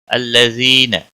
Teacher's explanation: الذین یا مدہ ہے، 1 الف کے برابر کھینچ کر پڑھیں گے۔